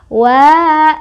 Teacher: cara bacanya adalah dipanjangkan dua harokat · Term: mad thobii